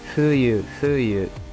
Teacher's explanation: não é um F, é mais uma fricativa bilabial surda, o Museryoshin Masatsuon.